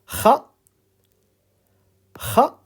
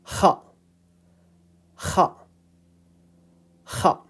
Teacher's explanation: coming from the upper part of the throat, closer to your uvula, with your mouth slightly open.